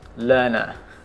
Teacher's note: Nah, satu kata aja tapi ada dua aturan. Di sana R bertemu N, R tidak dibaca. Kemudian R di akhir, juga R tidak dibaca.